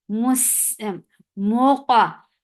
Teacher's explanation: For dhamma, circle your lips, attach with qaf. Qaf will be heavy and it will get sifa of qalqala.